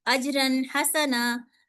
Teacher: تو یہاں پہ کیا ہوا پیچھے یہاں پہ ایک کلکلا کا بھی آ گیا ساتھ ہی اور یہاں پہ کیا آ گیا اظہار ہو گیا کیونکہ آگے حروف حلقی میں سے حرف آ رہا ہے. تو یہاں پہ میں نے تنوین میں جو چھپا ہوا نون ہے اجرن، تو میں نے اس کو ظاہر کر دیا